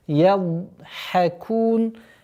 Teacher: Применяем правило продолговатость, свойство продолговатости у звука дад. Ядхакун. Кун, при остановке фатха аннулируется, уходит в сукун и долгота в размере 2 огласовок даммы.